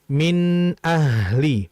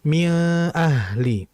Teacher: Karena huruf hamzah keluar dari tenggorokan , yang disebut halqo. Jadi harus dibaca dengan izhar yang jelas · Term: Izhar halqi